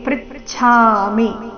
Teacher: ಮಿ ರಸ್ವ ಅದರ ಮೇಲೆ ಆಘಾತ